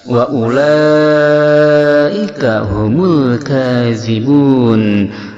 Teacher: ada mad asli bertemu dengan huruf yang baru mati karena waqaf, disebut mad arid lisukun yang panjangnya 2-6 harakat